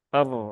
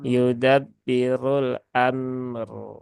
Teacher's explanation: Nah, ini huruf ro yang sukun, ya, dia posisinya berhubungan dengan fathah pada huruf hamzah ya di depan huruf mim. Maka dia ro sukunnya dibaca dengan tafkhim ya, dengan tebal.